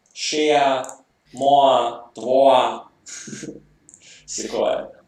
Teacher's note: і звук «є» випадає, не випадає лише на початку слова. Якщо у тебе є якась голосна буква, після неї має бути якась єднована голосна, то той звук просто випадає, і так далі функує.